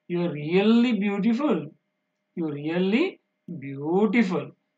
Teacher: So that is gradually fall and rise. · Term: falling and rising